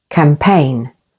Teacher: campaign with the stress on the second syllable